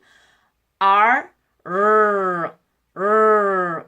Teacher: 혀를 구부렸을 때 입에 어느 기관에 닿지 않는 소리예요